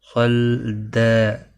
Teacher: صاد مستعلیہ پر پڑھا جائے گا اور وقف کی صورت میں وقف بالابدال ہوگا. دو زبر کو بدل کر ایک زبر کے ساتھ پڑھیں گے.